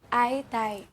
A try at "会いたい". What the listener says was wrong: aitai, it sounds like it has a low-high, low-low pitch pattern. So that's something you can work on if you want to improve your pronunciation. But Japanese pitch accent is not as strict as proper tonal languages like Chinese, Thai, or Vietnamese.